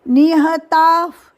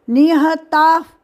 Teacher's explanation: ता के आगे विसर्ग कंस में फ जैसा उच्चारण लगना चाहिए